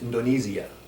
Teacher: they will make that i sound a little bit more ii that s is going to be a little bit more like a Z